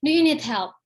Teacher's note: raising falling intonation when you are annoyed, ya, by the person you are talking to.